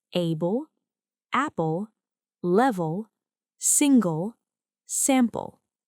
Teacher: In some words, L forms its own syllable and is often called syabic L or dark L. The vowel sound is reduced and L carries the syllable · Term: syllabic L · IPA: /l̩/